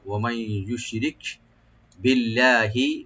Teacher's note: কাফে এখানে আমরা একটু হামস করব, কলকলা হবে না